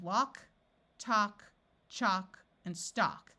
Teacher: in all these words the a has its broad sound of a and the L is silent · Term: broad sound of ah